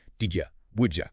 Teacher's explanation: Did you and would you? Yeah, they both get that J sound.